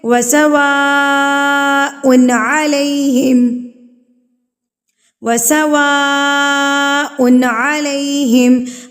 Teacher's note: بڑی مد کو یعنی کہ مد متصل کو کھینچ کے پڑھنا ہے